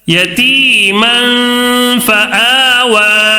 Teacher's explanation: فآ، واو کھڑا زبر وا، فآوى. اب یہ یا جو ہے نا لکھنے میں آتا ہے، پڑھنے میں نہیں آتا ہے